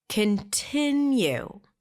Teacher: The primary stress here is on the second syllable.